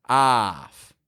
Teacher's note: Those F's are just kind of fading. They're weak on the ending. We don't give a lot of power to the consonant sounds in English.